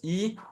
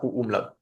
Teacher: la diferencia que tienen es que la segunda vocal se está haciendo con los labios redondeados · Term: redondeo